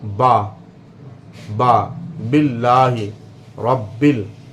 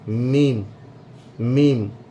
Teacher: जब तरी मिलती है होंठों की तो बा अदा होता है, और जब खुश्की मिलती है तो मीम अदा होता है।